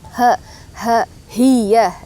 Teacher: ha yang suaranya bulat yang besar ya yang arah ke dada atau sifat atau tempat keluarnya itu di Pangkal tenggrokan atau bawah